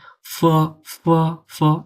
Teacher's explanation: যখন আমি এফ উচ্চারণ করতেছি তখন আমার উপরের পাটির দাঁতটা ঠোঁটের সাথে লেগে যাবে। ফ, ফ, ফ এরকম।